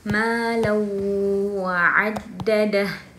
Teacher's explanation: fathatain bertemu waw, suara tanwin ini masuk ke huruf waw